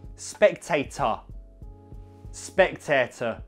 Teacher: It's a bit of a more lazy schwa in the Hull accent. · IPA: /eɪ/